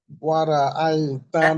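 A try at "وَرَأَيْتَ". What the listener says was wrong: না, ওয়া র র, রটা গান গায়ে উচ্চারণ হয় না, র হয়, ওয়া র। রা না, ওয়া র র, ওয়া র, রা বললে ওটা ভুল হবে। ওয়া র, ওয়া র, মুখটা গোলের দিকে থাকবে, ওয়ারা এরকম না, ওয়া র।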